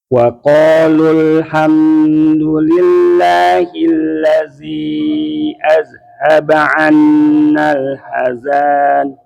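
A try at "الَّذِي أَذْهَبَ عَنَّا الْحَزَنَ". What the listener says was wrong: Ya pendek ya Pak. Pendek ya. Coba ulangi.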